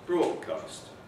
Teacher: phoneme 1, D, is alveolar. Phoneme 2 here is velar. Why is it velar? Because it's been influenced by phoneme 3, which is the past, which is also velar. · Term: assimilation